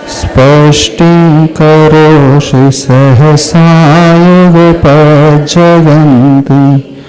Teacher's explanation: इस श्लोक में तीनों ही सकार का उच्चारण हो रहा है। दंती स, तालव्य श और मूर्धन्य श।